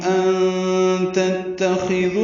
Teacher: نون ساکن کے بعد تا کی وجہ سے اخفا ہو رہا ہے، نون کی آواز چھپائی جا رہی ہے. تا دونوں باریک ہیں، خا پر ہے لیکن جلدی پڑھنا ہے اس کو معروف طریقے سے.